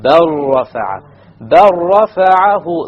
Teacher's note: You drop the lam completely.